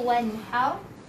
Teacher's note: Getaran untuk ra sekali kita baca dua saja getaran.